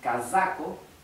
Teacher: cuando ven una Z o en general una s sola como en casaco se pronuncia Z